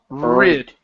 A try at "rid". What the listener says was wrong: you're starting with your mouth open instead of starting on the sound.